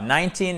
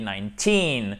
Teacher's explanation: on fait bien l'accentuation sur la seconde syllabe, ok? On ne dit pas 19, mais on dit 19.